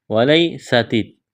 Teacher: یا ساکن سے پہلے زبر، یا لین بغیر کھینچ کے پڑھنا ہے، سین کو باریک پڑھنا ہے، سیٹی کی آواز پیدا کرنی ہے